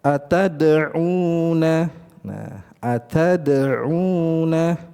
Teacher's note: Jadi dia keluar dari ujung lidah bertemu dengan gusi gigi seri atas.